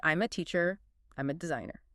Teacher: The M sound in I'm slides directly into the A.